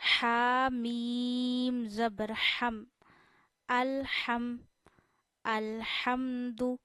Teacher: یہ ہا گلے کے درمیان سے ادا ہوتا ہے۔ ہا کو بھی آپ نے میم کے ساتھ جوائن کرنا ہے، اس کی وجہ جزم آنا ہے، میم بھی ساکن ہے۔